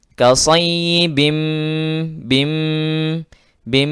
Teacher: tanwin bertemu dengan mim idgham bi gunnah